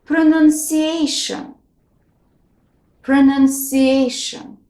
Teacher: here the second and the fourth syllables are stressed